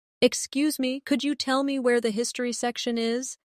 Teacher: In natural speech, could you becomes could ya.